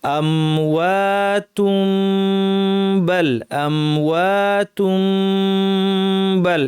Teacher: এই বিধার নাম হচ্ছে ইকলাব, পরিবর্তন করে পড়তে হবে আমাদেরকে, অর্থাৎ নুন সাকিন ও তানমিনের পর বা আসলে এই নুন সাকিন বা তানমিনকে পরিবর্তন করে মিম বানিয়ে পড়তে হয় · এই নুন সাকিন বা তানমিনকে পরিবর্তন করে মিম বানিয়ে পড়তে হয় আমাদেরকে